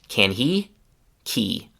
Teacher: So the h in he also disappears. So again can he becomes simply key.